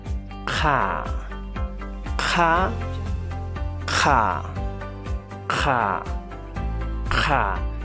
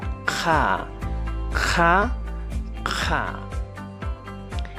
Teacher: El sonido se produce desde la raíz de la lengua hacia afuera. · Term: consonante aspirada